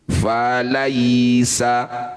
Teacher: bunyi ya sukun baca dengan lembut. Caranya berikan huruf vokal i ketika baca ya sukun. Falaisa, bukan e. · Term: huruf lin